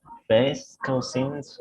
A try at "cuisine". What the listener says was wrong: Cuisine, porque si no suena como cousin, no como primo. It's like double E, no? Cuisine.